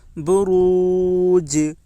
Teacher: جیم کے اوپر جزم ہے، جزم والے حرف کو پیچھے والے حرف سے ملا کر پڑھیں۔ جیم حروف قلقلہ کے 5 حرفوں میں سے ایک ہے، اس لیے جیم میں قلقلہ ہوگا۔